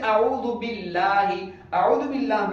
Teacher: اعوذ باللہ میں اللہ سے پہلے اعوذ بی کے با پر زیر ہے، اس لیے اللہ کو باریک پڑھا